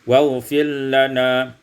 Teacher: waghfir lana, idgham ra fil lam, diidghamkan ra pada lam menjadi waghfir lana